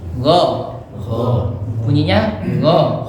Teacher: Jadi huruf ghain itu bukan huruf G ya. Ghairi bukan G, tapi di pangkal tenggorokan atau di ujung tenggorokan.